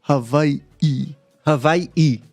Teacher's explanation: there's an okina, which is like what you would call a glottal stop. So it's a stop in between two I's.